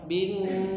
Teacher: ingat bin dipanjangkan tiga harakat